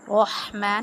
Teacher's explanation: बिस्मिल्लाह में सीन को हम वाज़े करके पढ़ते हैं, सीटी की सी आवाज़ आती है। रहमान, अब इस हा को हम जो है ना हलक से अदा करते हैं, हरूफ हल्की में से है। · रहमान, अब इस हा को हम जो है ना हलक से अदा करते हैं, हरूफ हल्की में से है। रहमान, रा को हमने पुर पढ़ना है और हा को बारीक पढ़ना है।